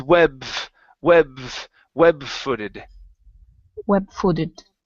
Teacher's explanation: let's connect the B and the F instead of pausing